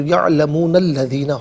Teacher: یعلمون میں نون پر زبر ہوگا، اس سے الذین کے لام کے ساتھ ملائیں گے، درمیان سے الف حذف ہو جائے گا